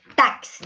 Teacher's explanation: O X, ó, o X tem o som de KS, tá? De KS. Isso só ocorre na língua portuguesa brasileira, hein, meus amores?